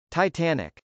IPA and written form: taɪtˈænɪk (titanic)